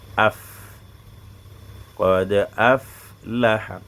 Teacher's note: sa sortie est au niveau de l'extrémité des incisives supérieures, c'est-à-dire l'extrémité, chaque bout des dents qui est en bas, on dit l'extrémité des incisives supérieures sur l'intérieur de la lèvre inférieure. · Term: faoun